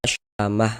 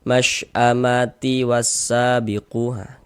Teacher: kalau kita wakofkan yang dibaca huruf H ini, tapi kalau kita wasolkan yang dibaca huruf ta. Ini kita wakof nih huruf ta marbutoh, maka kita baca syamah.